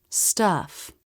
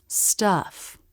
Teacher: The tongue presses down just a bit in the back. In a stressed syllable, the vowel curves up, then down.